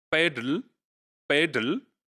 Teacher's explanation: So l is syllabic. It is acquiring the position of syllabic here